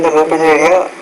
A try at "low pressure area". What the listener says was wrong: Be careful, low pressure area. So sometimes you're not pronouncing those medial sounds. Low pressure area.